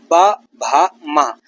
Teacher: ओठों से इनकी ध्वनि निकलती है टकराते हुए, तो ओठ से इनकी ध्वनि बनती है। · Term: प वर्ग